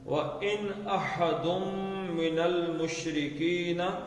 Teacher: وَإِنْ أَحَدٌ مِّنَ الْمُشْرِكِينَ، لیکن یہاں سے تھوڑا سا کھینچنا ہو نا، احدم اور من ہے، اس کو کھینچیں تھوڑا سا. ان کا آپ نون کا اظہار کریں گے کیونکہ اس کے آگے حمزہ آ گیا، الف آ گیا حرکت والا